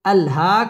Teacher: খারা জবর এক আলিফ টেনে পড়তে হবে